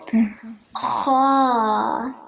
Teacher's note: There's like a harsh sound like the ha, but then it comes from the throat.